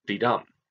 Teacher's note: Sonnets are usually written in iambic pentameter, which is 10 syllables, syllables meaning beats, per line, written as 5 repetitions of didum, of an unstressed and a stressed syllable